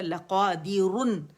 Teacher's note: اور کیونکہ را کو ہم یا اگر روانی میں پڑھیں گے تو ہوگا لقادرن، موٹا را پڑھا جائے گا، لیکن کیونکہ یہاں ہم وقف کر رہے ہیں نا، سب وقف کے ساتھ پڑھ رہے ہیں، تو را باریک ہو جائے گی.